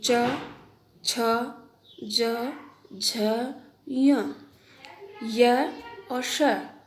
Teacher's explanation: ई ई च वर्ग यानी च छ ज झ य और श, इनका उच्चारण तालु से होता है। अर्थात उच्चारण करने में जिह्वा तालु को स्पर्श करती है।